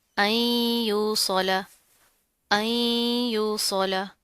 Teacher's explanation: اب یہاں پر کیا نون ساکن ہے، اس کے بعد حروف یرملون میں سے پھر یا آ رہا ہے، تو یہاں پر ہم غنہ کریں گے